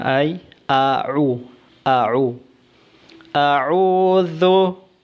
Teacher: Ang ain ay mas madiin kaysa sa hamza.